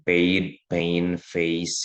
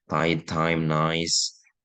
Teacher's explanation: Kalau closing dia glide-nya itu ke atas gitu ya, itu closing. Nah, menutup ya, posisinya menutup kalau ke atas itu.